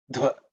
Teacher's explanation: this dha is the 4th letter in the tha varga, so it has to be aspirated.